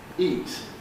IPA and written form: iːt (eat)